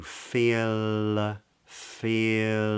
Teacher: but because it's followed by a word beginning with another vowel it's actually a light L too much information to go into right now but the back of the tongue is low